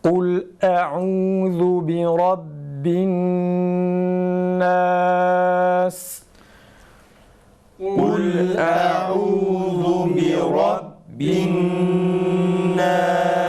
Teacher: Mesela bi rabbi ba harfinde nefesimizi tam kesiyoruz. Bi rabbin nunda ise gunne sıfatı olduğu için üzerinde duruyoruz. Bi rabbin nas ve nun harfini bi rabbin nas değil de bi rabbin nas şeklinde okuyoruz.